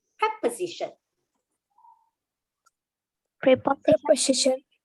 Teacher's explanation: the s, because it's between an o and an I vowels, it becomes the z sound